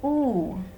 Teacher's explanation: udara keluar dari leher atau keluar dari celah glotis celah pita suara dan kemudian masuk kedalam mulut dan tidak mengalami hambatan yang ada hanya bentuk mulut dan bentuk lidah yang berubah GTA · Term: bunyi vokal